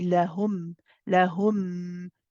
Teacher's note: This meme here is a idhar shafawi. So this is tawassut. We pronounce the meme clearly.